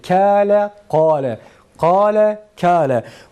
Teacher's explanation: Kale'de şu elif kaf kalın olduğu için elif kalın okunur. Kâle'de ise kaf ince olduğu için elif ince okunur.